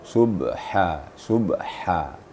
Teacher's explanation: ha yang ditengah tenggorokan Subha Subha ada hembusan ada hamasnya